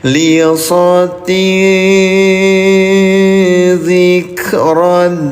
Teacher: Yang dibacanya samar nih bunyi nun sukunnya atau tanwinnya tahan dua harakat.